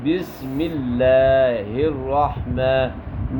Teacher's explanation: سین سیٹی کی طرح آواز آئے گی. بسم اللہ الرحمن، ملہ لام کا لام باریک ہوگا لفظ اللہ کا ٹھیک ہے.